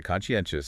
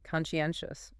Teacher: Stress on the third syllable in 4 syllables again.